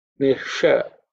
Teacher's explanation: the sha is cerebral sha